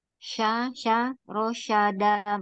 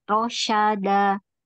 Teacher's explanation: Mahrudnya tengah lidah nempel di langit-langit atas.